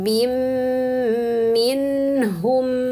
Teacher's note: ini bin idghamkan ke mim sehingga dengung ya.